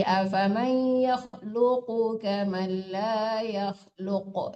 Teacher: dipantulkan qafnya karena qaf itu huruf qalaqalah